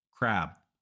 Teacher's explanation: Americans don't always fully pronounce b and P at the end of words